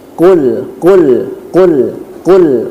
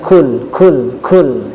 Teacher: huruf qaf ketika dikeluarkan tidak disertai dengan angin ataupun hembusan nafas